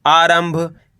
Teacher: इसके बाद वाला अक्षर भ ये रहा भ। तो यहां पे अपन आधा म पढ़ देंगे